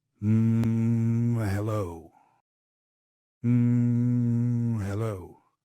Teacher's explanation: It has weight. That's the transition from a thin, throat-based sound to a grounded, chest-resonant one. That's the mechanical shift.